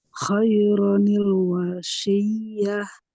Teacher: setiap tanwin jika dia bertemu dengan hamzah wasol, maka cara bacanya harus ditambah dengan nun kasroh, ya, dengan bunyi ni.